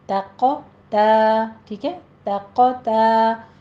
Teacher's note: तक़ा आगे पीछे ता है उसको बारीक रखना है, क़ौफ़ को मोटा पढ़ना है, तक़ा तो नहीं कहना, ठीक है।